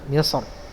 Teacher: Misr dibaca tafkhim ya, Misr, karena berharokat fathah